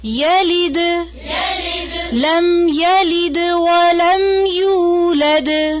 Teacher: یا کی زبر کو لمبا نہیں کھینچنا. یلد نہیں.